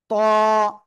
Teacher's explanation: জিহ্বার আগা সামনের উপরে দুই দাঁতের আগার সঙ্গে না গোড়ার সঙ্গে লাগাবেন, লাগে মোটা আওয়াজে উচ্চারণ হবে।